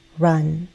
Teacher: It's a short sound, short vowel, run. Central vowel, meaning the middle part of my tongue, is higher. It's also a very relaxed sound